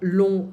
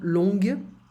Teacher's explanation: I don't pronounce the G in the masculine form.